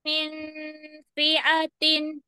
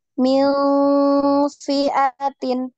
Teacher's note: Nun ketemu fa ini di ikhfa ya, disamarkan. NG tapi samar ya. Tidak tidak eng banget tapi mil mil fiatin ya, seperti itu.